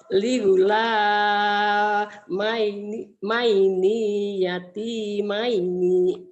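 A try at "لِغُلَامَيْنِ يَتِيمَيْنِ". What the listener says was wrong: Ninya pendek. Ligula maini ya. Nia. Ligula maini yati maini.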